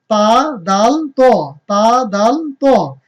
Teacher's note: জিহ্বার আগা উপরের দাঁতের গোড়ার সাথে লাগিয়ে উচ্চারণ করতে হবে